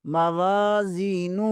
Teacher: واو زبر کے آگے الف مدہ ہے، اسے ایک الف کے برابر کھینچیں گے